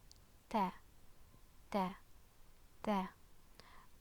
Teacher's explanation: the tip of the tongue touches the upper front teeth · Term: letter Taa'